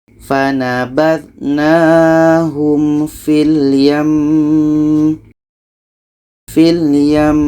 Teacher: Maka hukum mim tasydid ini adalah wajibul gunnah, wajib dengung. Maka ketika berhenti tetap kita dengungkan dulu baru matikan mimnya